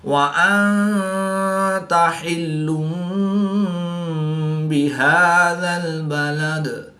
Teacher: نون ساکن کے بعد تا حروف اخفا میں سے ہے تو یہاں پر اخفا ہوا یعنی غنہ زمانی کر کے پڑھیں گے۔ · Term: اقلاب